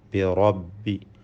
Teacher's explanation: അഊദു ബിറബ്ബി, റാഇൻ്റെ തഫ്ഖീം സൂക്ഷിക്കണം. റാഇനെ തഫ്ഖീം ചെയ്ത് പെരുപ്പിച്ച് സ്വരഭാരത്തോടെ ഉച്ചരിക്കേണ്ടതാണ്.